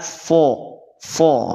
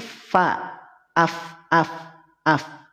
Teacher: istifal itu adalah ketika pangkal lidah kita tidak naik ya ketika pangkal lidah kita tidak naik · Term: huruf yang tipis